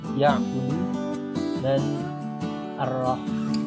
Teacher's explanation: Bagian tengah tenggorokan, daerah katup tenggorokan, epiglotis bertemu dengan dinding tenggorokan ini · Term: huruf ain dan ha